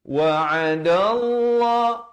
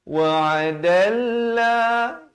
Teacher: dan lafaz jalalah dibaca tebal. Jangan baca wa'adallah, itu nipis